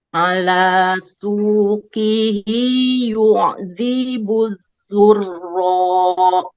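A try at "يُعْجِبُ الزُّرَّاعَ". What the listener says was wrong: Oke, pas masuk ke ainnya ditekan.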